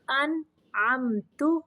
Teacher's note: نون کو ظاہر کرنا ہے اور میم کو بھی ظاہر کرنا ہے